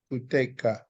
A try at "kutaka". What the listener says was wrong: No, there's no te, it's ta.